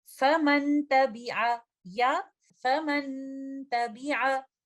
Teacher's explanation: दोनों सूरतों में मैं नून साकिना का इजहार कर रही हूँ